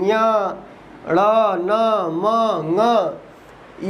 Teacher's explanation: अनुनासिक क्या है? क्योंकि इनका मुख और नासिका दोनों से उच्चारण होता है